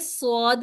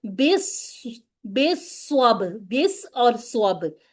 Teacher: सौद पर हमने एक तो सिटी का ख्याल रखना है, दूसरे मुफख्खम करना है, और तीसरी क्या बात याद रखनी कि 2 दफा पढ़ना है, ठीक है।